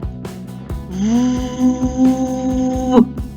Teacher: звук в тягнеться довго але він не співається як голосні бо наш ротик закритий повітрю що виходить з ротика заважають нижня губа та верхні